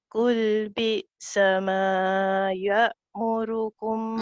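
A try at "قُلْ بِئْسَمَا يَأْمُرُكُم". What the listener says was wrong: Ma dia tu awak tak payah panjang sangat. Panjang sangatlah awak punya ma tu. Pendek sikit.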